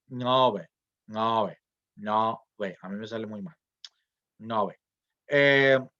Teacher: es lo que llama esta vocal es una o abierta